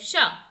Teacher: इसमें कंपन नहीं होता, इसलिए ये अघोष है